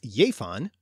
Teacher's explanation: give did exist in Old English with that y sound as jefan, and should have become yiv, the word also existed in a related Old Norse form in the north of England with a hard g, and therefore give has the pronunciation it does today. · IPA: /j/